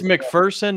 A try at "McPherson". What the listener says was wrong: There's no fear in McPherson. It's P-H-E-R-S-O-N. It's not E-A-R-S-O-N. There's no fear in it.